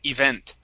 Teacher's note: This word here, instead of event, it's event. The stress is at the end of the word